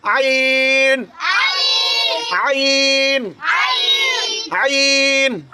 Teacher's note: এই হলকের মধ্যখান থেকে আইন হরফ উচ্চারিত হয়